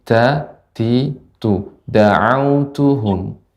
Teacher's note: sifat ta adalah hamas. Da'autuhum, ada hamasnya, ada sedikit, ada udara yang mengalir